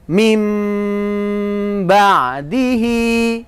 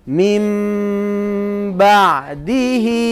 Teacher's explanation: Dinamakan bacaan iklab. Berarti suaranya nun sukun harus diganti, harus dirubah menjadi suaranya mim sukun atau mim yang bertasydid, dengung. Mim ba'dihi.